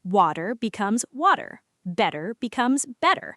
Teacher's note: The American flap T softens.